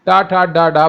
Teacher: टा ठ ड ड वाली लाइन पूरी मुर्धन्य होती है